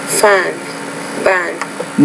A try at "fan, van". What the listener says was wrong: No, you're saying fan, ban. I'm saying fan, van, van. So that the V, when it's at the beginning of the word, you're not clearly pronouncing that consonant sound there. So you have to be careful about that.